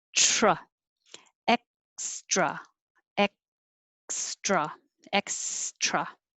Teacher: The TR is the same as the DR because they're made in the same place, and you have to have enough pressure.